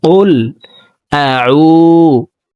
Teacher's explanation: কফ হরফকে জিহ্বার গোড়া তার বরাবর উপরের তালুর সঙ্গে লাগাইয়া উচ্চারণ করব।